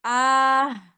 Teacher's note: A-nya itu kayak ada kecampur H ya di belakangnya ketika berhenti